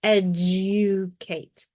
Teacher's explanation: long u is after the D the D is going to sound like a j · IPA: /j/